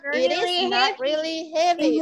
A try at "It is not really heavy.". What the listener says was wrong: Okay, that's right. Okay, good job, luar biasa.